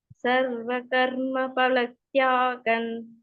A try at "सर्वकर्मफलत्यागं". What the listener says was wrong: பலத்தியாகம் வருது, பல ப கொள்ள ட்ரை பண்ணுங்க. பலத்தியாகன், பலத்தியாகன் வேண்டாம், அது மட்டும் தான் சும்மா பார்த்துங்க, ஒன்றும் பெரிய விஷயம் இல்லை.